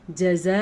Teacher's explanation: یہ جو مد ہے یہ 6 الف کے برابر ہے